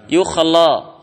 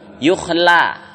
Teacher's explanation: La-nya kan tipis ya, qafnya tebal.